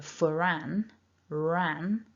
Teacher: this teeny tiny R just kind of pops itself in before the name Anne